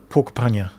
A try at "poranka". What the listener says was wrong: Sounds like you're adding a K under P O R E.